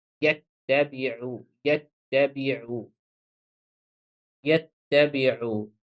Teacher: two ta, one is sakin and one is muharrak, has a vowel sign. So I pronounce them in a one time as one letter. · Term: shadda